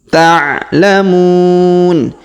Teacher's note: huruf mu kita panjangkan 2, 4 atau 6 harokat karena di depan huruf mu terdapat waw sukun sebelum huruf pemberhentian.